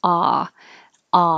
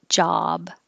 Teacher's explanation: it sounds like ah ah like awesome so the jaw is open and the lips are straight